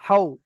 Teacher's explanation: হা জাবার হা ছিল, সেটা হাও হয়ে যাচ্ছে, একটা ওকার জুড়ে যাচ্ছে, হাও। খ যাবার খ ছিল, সেখানে কি হয়ে যাচ্ছে?